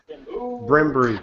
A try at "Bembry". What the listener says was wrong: Bimbry. It's that simple. Bimbry. Not Barimbry. Just two syllables. Bimbry.